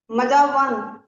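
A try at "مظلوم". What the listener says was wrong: नहीं, लाम है वो, मीम के बाद जोए है, उसके बाद देखें, लाम है ना वो। मज नहीं, मज मज मजलूम, जुल्म, जालिम, मजलूम, मजालिम।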